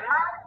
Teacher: Normally, we got four tones in pinyin, like the word ma. Here, ma is a flat tone, which we call the first tone.